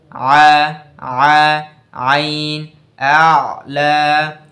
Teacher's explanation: আইন উচ্চারণ করার সময় বাতাস বেরায় না, বেরাচ্ছে না। আর আওয়াজটা কি শক্ত হচ্ছে, আওয়াজটা মাখরাজে জোরে ধাক্কা লাগছে।